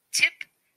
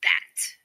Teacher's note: The t is a voiceless stop consonant. The sound for t is t, as in the beginning of tip and the end of bat.